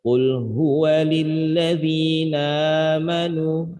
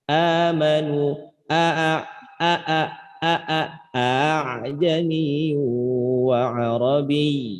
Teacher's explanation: Hamzahnya harus kena di pangkal tenggorokan gitu. Kalau nggak kena tadi ketashil.